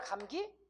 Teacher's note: 근데 영어권 사람들한테는 기억이 두 개인 거야. 앞에 있는 기억은 무성음인 거야. 그러니까 K지. K. 뒤에 있는 기억은 유성음인 거야.